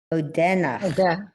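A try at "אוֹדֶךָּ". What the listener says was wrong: Notice there's a dot inside that final letter. Odeka. Odeka.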